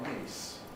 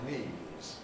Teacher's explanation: there is quite a noticeable difference of duration between those two vowels